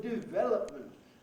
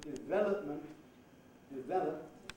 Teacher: It's a favourite one for EFL users to distort the rhythm of. But development, develop, stress on the second syllable, that's the only possibility